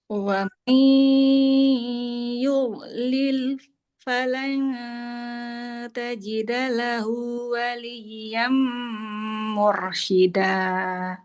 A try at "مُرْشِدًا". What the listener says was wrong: Jangan kepanjangan shinanya. 2 harokat saja. Mursyida. Untuk mengukur 2 harokat itu dia sebenarnya satu ketukan. Nah, jadi mengikut pada tempo bacaan kita. Kalau kita bacanya lambat, maka ketukannya pindahnya lambat. Kalau misalkan temponya cepat, maka ketukannya cepat.